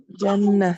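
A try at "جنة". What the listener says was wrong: Jannatun. Tuh, jannat bukan jannah. Kan kita harus dibaca semua karena belajar, ya. Jannatun.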